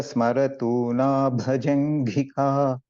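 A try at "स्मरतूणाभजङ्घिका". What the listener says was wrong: Just this tuna, you're chanting this as na, right? I couldn't hear it. I heard a bit na, ta, tha, da, tha, na. Parikshipta smaratuna bhajanghika.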